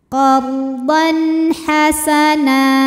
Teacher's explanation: Lalu ada hukum izhar halqi sebab ada tanwin fathah menghadapi huruf halqi atau huruf tenggorokan yaitu ha, maka tanwin dibaca dengan jelas.